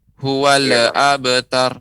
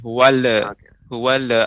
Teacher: pengucapan lam tidak boleh dipantulkan huwal abtar enggak boleh wale wale abad akan tetapi harus bener-bener